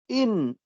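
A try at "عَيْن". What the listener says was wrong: No, see, it's not the same as a Hamza. A Hamza is a. The Ain is a. A, a. It's like you constrict the sound when it comes out. A, a.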